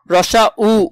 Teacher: সংবৃত মানে দুই ঠোঁটের মাঝখানে ফাঁকা জায়গা কম থাকবে। যেমন রসা উ উচ্চারণ করলে দেখবে দুই ঠোঁটের মাঝখানে ফাঁকা জায়গা কম।